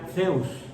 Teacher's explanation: Sería como una S arrastrada con la lengua debajo de los dientes, la lengua un tanto de fuera. Porque la S la decimos juntando los dientes.